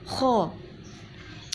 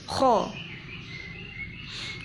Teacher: Kalau pengucapan kho ada ngoroknya, kho, bibirnya moncong